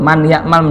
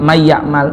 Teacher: ada yang dibaca di lebur bunyi n-nya itu pun ada dua ada yang dengan dengung